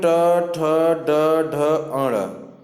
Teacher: ट वर्ग में ट ठ ड ढ अण, ये सभी जो है मूर्धन्य व्यंजन होते हैं